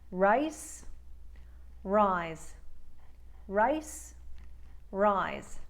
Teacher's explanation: the S sound in rice has no vocalization. The Z sound in rise does.